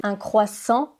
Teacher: Un croissant, pas une croissante. Le T est muet à la fin. Mais elle dit bien « je voudrais », ça c'est bien.